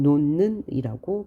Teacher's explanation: 음절의 끝소리 규칙을 적용해줘서 디귿으로 대표음으로 바꿨어요. 그런데 바로 다음에 비음이 오고 앞에 파열음이 있으니까 이 파열음을 비음으로 바꿔주기 때문에 최종 논는이라고 발음합니다.